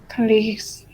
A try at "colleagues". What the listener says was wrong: It's still an S. I want a Z. A Z. Colleagues. That's still an S. Z. Stronger. No, that's still an S. Colleagues. No. No. Follow what I say. You're saying colleagues. No, I want you to say colleagues. Show your teeth. No, let's do an S. Z. Z. Practice this sound. Z. Zoo. Leagues. Z. Colleagues.